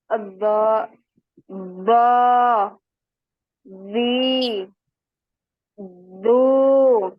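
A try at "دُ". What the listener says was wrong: Hati-hati jangan ke depan, makrotnya jangan ke ujung lidah. Du, ya, beda ya, bunyinya beda. Du. Jadi ditekan, coba ditekan di gigi geraham lidah sampingnya. Du, du. Jadi suara itu keluarnya dari samping situ, ya. Asal suaranya dari situ. Du, du.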